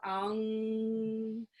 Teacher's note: it's a very nasally sound, that ong, and then the tongue goes up at the roof of the mouth